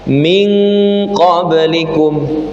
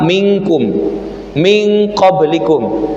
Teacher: Kalau qof kaf minkum min qoblikum itu menggunakan eng ming